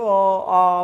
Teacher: आ मुंह खुला ही रह जाता है। कोई अक्षर कोई मुख का अवयव किसी से टच नहीं होता है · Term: स्वर